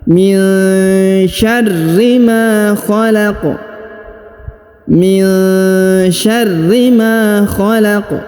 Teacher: huruf Ma dibaca panjang dua harakat karena di depannya terdapat Alif